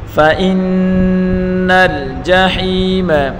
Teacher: یہاں وآثر الحیات الدنیا فإن الجحیم فا کے اوپر پڑھی حرکتیں بغیر کھینچے پڑھیں گے اور حمزہ کو نون کے ساتھ ملا کر پڑھیں گے اور نون مشدد ہے اس کو غنہ کے ساتھ پڑھیں گے